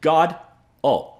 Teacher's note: GOD-oh with the accent on the first syllable is how it should be pronounced